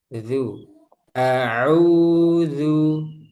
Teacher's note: jangan sampai tebal zu tapi zu tipiskan zu istifal dan infitah.